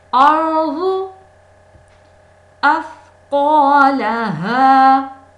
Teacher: ثا نرمی سے، سیٹی کی آواز نہ آئے اس میں